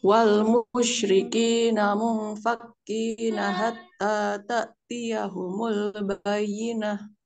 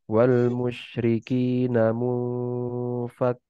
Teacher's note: Nun sukunnya ini, nun sakinahnya ini dia diikhfakan, apa, disamarkan, terus jangan lupa ada gunahnya dua harokat ya. Karena nun sakinah bertemu fa itu dia hukumnya ikhfa dan juga disertai gunah juga.